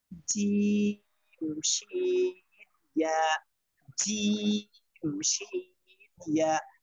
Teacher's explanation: 6 নম্বর মাখরাজ, জিহ্বার মধ্যখান, তারপর আবার উপরে তালুর সঙ্গে লাগাইয়া, জিম শিন ইয়া